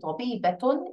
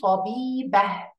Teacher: Instead of saying طبيبةٌ, it will be طبيبة. So we will change the sound of تاء مربوطة to be هاء مربوطة at the end.